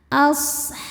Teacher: shadnya desis ya karena punya sifat shofir. Ada desis seperti suara angsa. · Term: sifat sofir